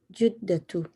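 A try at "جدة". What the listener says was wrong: Yeah, there's a mistake there with a dhamma. Jaddatu.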